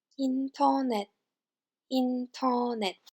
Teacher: Unstressed R is dropped, and the last consonant T is replaced with an S